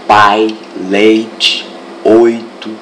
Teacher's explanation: você pode perceber que sua boca vai fechando no ditongo decrescente